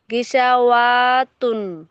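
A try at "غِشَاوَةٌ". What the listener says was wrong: সিনটি আলিমাদ্দা টান হবে না হারাকাত ওয়াও এর উপর যাবার আছে টান হবে, কোনটা টান হবে? সিন আলি যাবার টান হবে। তো এখানে সিনটি না টান হয়ে ওটি টান হয়ে গিয়েছে, খেয়াল করে পড়বেন। গিসা অতুন।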